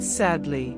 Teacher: The word sadly has two syllables. The first syllable receives the stress. The second syllable is much weaker.